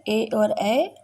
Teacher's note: कंठ तालव्य यानी कंठ और तालु की मदद से ए और ए।